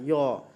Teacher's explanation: य अगर आप लोग बोलिएगा तो इसमें तालु का यूज होगा